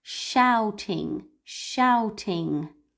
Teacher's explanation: the OU in the middle is ow, ow. This is the sound in the middle. It's a diphthong.